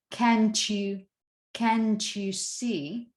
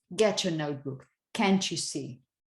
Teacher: when you have word final t that may coalesce, might get together with the initial y sound, the one you say when you say you, you're, young, yes. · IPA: /tʃ/